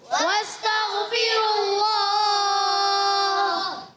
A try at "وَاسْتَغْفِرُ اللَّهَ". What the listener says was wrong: آخر میں ہاں کو بھی ادا کرنا ہے۔ ان اللہ